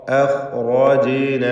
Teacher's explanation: ജീമിൻ്റെ സുക്കൂൻ ഖൽഖല സൂറ നൽകി ശബ്ദം ഹറക്കത്ത് പോലെ ചലിപ്പിക്കുകയും വേണം